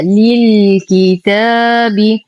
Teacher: ننتقل من كسرة اللام إلى إسكان اللام القمرية